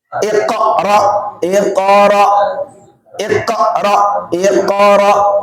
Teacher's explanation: jadi qalqalah itu mantul tapi bukan ditabrakin gitu